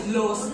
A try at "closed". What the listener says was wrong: closed dot উচ্চারণ করতে হবে got it